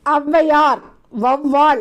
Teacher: மாத்திரை அளவுல வந்து முழுமையா ஒலிக்கணும் ஆனா வந்துட்டு அவ்வையார் வவ்வால் அப்படின்னு சொல்லும்போது முதல்ல வரும்போது தனக்குரிய ரெண்டு மாத்திரையிலிருந்து ஒன்றரை மாத்திரை அளவுதான் ஒலிக்குதுன்றாங்க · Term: அவகார குறுக்கம்